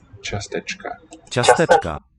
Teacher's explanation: The plain C would be a ts, and this diacritic E, as in Irish, palatalizes it.